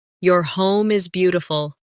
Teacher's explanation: Stress beautiful to make the compliment sound genuine.